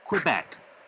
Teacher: quebec the second syllable is stressed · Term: stressed syllable